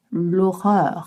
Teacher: We don't pronounce the H in French.